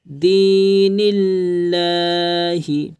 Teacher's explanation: اللہ کے لام سے پہلے زیر ہے تو لام کو باریک کر کے پڑھیں گے۔